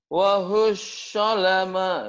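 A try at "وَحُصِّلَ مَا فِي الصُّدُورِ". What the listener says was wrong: Wahusila. Tuh, fisnya udah bisa, wahusnya kayak orang sakit gigi. Wahusalama. Wahusad. Sad anginnya pelan, lembut.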